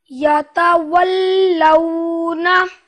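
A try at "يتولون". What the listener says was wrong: یتولون واو میں ہونٹ گول رہے ہیں. لیکن اتنا زور نہ دیا ہے, آرام سے.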